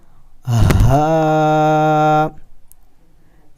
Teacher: اسے ہم نے موٹا کر کے پڑھنا ہوتا ہے، اس کی آواز ہم نے نکالنی ہوتی ہے سینے سے، چیسٹ سے۔